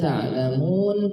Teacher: Ada waw sukun sebelumnya dhammah, panjangkan.